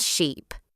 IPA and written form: ʃiːp (sheep)